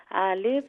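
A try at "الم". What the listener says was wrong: नहीं नहीं नहीं, आलिफ नहीं नहीं, आलिफ नहीं, अलिफ।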